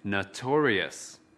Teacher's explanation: Từ notorious có 4 âm tiết. Trọng âm của từ notorious ở âm tiết thứ hai.